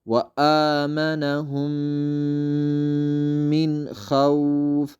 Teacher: ኢዝሃር ግልጽ ተደርጎ እንዲቀራ የምታደርግ ፊደል ናት ስለዚህ እዚህ ጋር ምንድነው ኑኗ ግልጽ ነው የምትደረገው ኢድጋም አናረጋትም